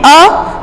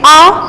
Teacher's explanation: इसी तरह से दीर्घ स्वर को हम विस्तार से जानेंगे कि इन स्वरों के उच्चारण में ह्रस्व स्वरों से दुगना समय लगता है, यानी कि उससे दुगना समय लगेगा बोलने में, उन्हें हम दीर्घ स्वर कहते हैं। जैसे आ, हमें अ जब हमने बोला कम समय लगा, इसमें आ थोड़ा दुगना समय लगा।